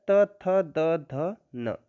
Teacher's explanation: एक वर्ग और होता है त थ द ध न, ये कहाँ से बोला जाता है? दंत से